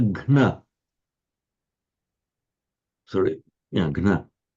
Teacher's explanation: In the case where the vowel drops out, you get a gna.